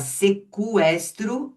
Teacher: a gente continua falando sequestro. O U continua sendo pronunciado, certo? Claro, se você tiver palavra estrangeira, segue aquilo que aquela língua estrangeira faz, como Miller, Millerian, que é a palavra que é uma palavra alemã, depois a o milleriano, que é derivado de Miller. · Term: U pronunciado